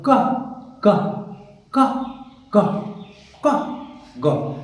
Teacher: place of articulation is velar, ka and ga. But manner of articulation is plosive